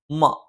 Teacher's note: മ രണ്ട് ചുണ്ടും തുല്യമായി അടച്ചുവെക്കണം.